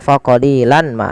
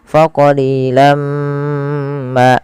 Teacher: Maka jangan lagi dibaca faqalilan ma, tapi langsung masukkan ke mim karena ia bacaan idgham bi gunnah. Kemudian setelah kita masukkan tanwinnya ke mim ditahan faqalilam ma.